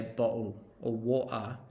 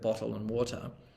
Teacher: that stopping sound is actually a glottal stop it's the air being stopped in your throat